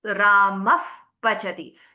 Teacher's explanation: You are exhaling, your lips are closing and the air escapes with a gush out of your lips, causing a blowing effect.